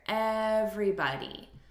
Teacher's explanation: look at the syllable stress here everybody so we're stressing the first syllable